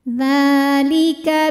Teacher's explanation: Dha hukumnya adalah matobi'i muqaddar karena dzal berbaris fathah panjang, maka dzal kita panjangkan dua harokat saja